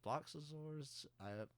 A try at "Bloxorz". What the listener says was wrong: Well, you're adding like 2 syllables to that. Bloxors. B-L-O-X-O-R-Z. 7 letters.